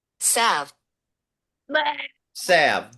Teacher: I don't think you pronounce the L